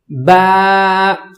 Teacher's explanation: الف با کو پڑھیں گے دونوں ہونٹوں کو ملا کر، پھر آواز نکالیں گے